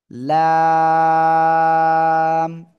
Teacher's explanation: চার আলিফ টেনে পড়তে হবে